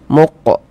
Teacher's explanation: Huruf qof ini sukun pantulkan muq seperti itu. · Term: qalqalah sugra